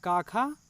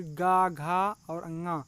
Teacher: का, खा वो अघोष हैं। फिर गा, घा और अंगा ये हैं सघोष।